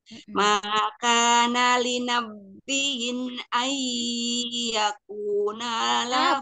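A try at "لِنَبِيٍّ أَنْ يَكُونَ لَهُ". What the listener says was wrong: bukan ba yang tasdid tapi ya yang tasdid li nabiin nabr Nggak ada nabernya, Mi. Coba kasih naber.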